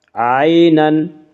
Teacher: یالین وہ یا جو ساکن ہو اور اس سے پہلے زبر ہو، یالین کو نرم آواز کے ساتھ جلدی پڑھیں گے۔